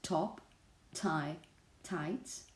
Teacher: we've discussed in this session remember when you have these sounds at the beginning of a stressed syllable they have a noticeable degree of aspiration